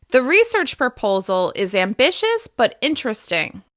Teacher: The slight rise in pitch signals that I'm not done talking and there's more to come. · I'm pausing and slightly changing my intonation after the words proposal and ambitious. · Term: thought groups